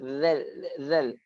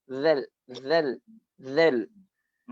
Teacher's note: kaedah dia kita letakkan hujung lidah kita za tu pada di hujung gigi atas, zal, hujung gigi kan, dekat kacip tu, zal.